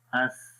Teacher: آواز مخرج میں جاری ہو رہی ہے، سانس جو ہے وہ بھی جاری ہو رہا ہے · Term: رخاوت